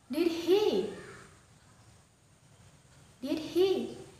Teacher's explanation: Itu adalah intonasi naik. Penekanannya di did he.